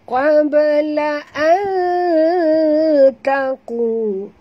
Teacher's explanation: nun mati bertemu ta, sorokkan bunyi nun ke dalam ta disertai dengung. Ini namanya ikhfa hakiki.